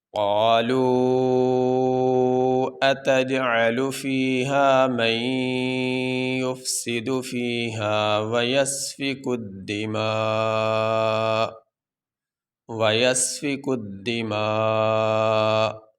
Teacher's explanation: ہمارا سبق یہاں تک ہوگا، یہاں پہ ہم وقف کریں گے، وقف کرنے کی صورت میں آخری حرف جو حمزہ ہے اس کو ہم ساکن پڑھیں گے، اس کے اوپر جو زبر ہے وہ نہیں پڑھا جائے گا